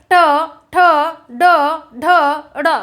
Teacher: हमारी जिह्वा दांत के पीछे वाले भाग को टच करेगी, जिसे हम मसूड़े कहते हैं, उसको टच करेगी, उसको मूर्धा कहेंगे।